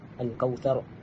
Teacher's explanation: Seterusnya a'tainakal kautsar. Kita matikan huruf ra dengan bacaan tafkhim ar-ra, tebalkan huruf ra.